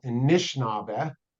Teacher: So the word Anishinaabe, for example, Anishinaabe, not only the A is dropped, but also that middle short I is dropped. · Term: syncopated dialect